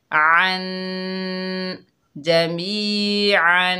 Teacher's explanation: आइन के ऊपर दो ज़बर हैं, वसल की हालत में यहाँ पर गुन्ना करेंगे।